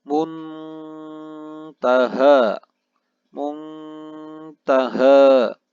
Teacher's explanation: Lalu di ayat ke-42 terdapat kalimat muntaha, muntaha, di mana nun sukun bertemu dengan huruf ta. Terdapat hukum bacaan ikhfa. Dibaca secara samar-samar atau mendengung.